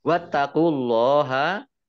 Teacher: ini taknya dibaca double, ada tasdidnya. Kemudian Allahnya dibaca tebal karena harokat di depannya dhammah.